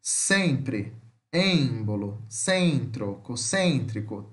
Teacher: semi-fechada frontal nasal não redondada